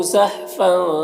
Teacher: تنوین میں اخفا ہو رہا، تنوین کی آواز کو ناک میں چھپا کر پڑھیں گے